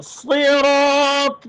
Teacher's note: صاد موٹا را بھی موٹا الف بھی موٹا را کی وجہ سے